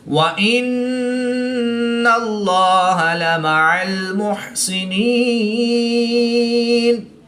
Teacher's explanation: نون مشدد ہے تو یہاں پر ہم غنہ آنی کر کے پڑھیں گے